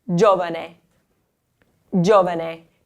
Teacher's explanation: the accent here, it's not on the second to last syllable, it's actually on the first syllable. It's giovane.